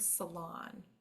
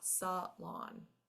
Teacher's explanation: again the accent is in the second syllable